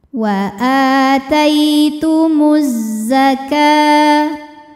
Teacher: Kemudian ada hukum alif lam yang dinamakan dengan alif lam syamsiyah. Karena alif lam menghadapi huruf syamsiyah yaitu zai, maka alif lam tidak kita baca atau biasa disebut dengan idgham syamsi.